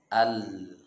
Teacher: Sisi lidah bagian depan dari sana keluar huruf lam